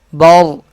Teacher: زبر ہے، اس لیے یہ را موٹا پڑھا جا رہا ہے۔